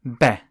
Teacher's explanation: in the word be meaning woman the final letter e is cut short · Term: glottal stop